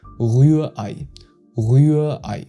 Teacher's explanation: So for the Ü, you need to round your lips and keep the vowel kinda high in your mouth. And you pronounce the EI like the English I.